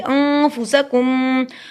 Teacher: فا کو ادا کرنے کے لیے دانتوں کو ہونٹوں کے درمیان میں لگائیے. سین پہ سٹی کی آواز آئے گی. انفسکم، کم پڑھیں گے.